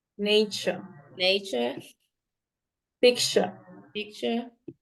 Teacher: don't read the RS and it has to sound CH at the end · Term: British